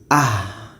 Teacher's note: Letaknya ha ini pada pangkal tenggorokan. Jadi, kita baca dengan ah.